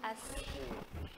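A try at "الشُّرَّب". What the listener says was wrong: Kurang tebal. Ash. Ash. Ash. Kurang tebal. Sifatnya itu tafashi.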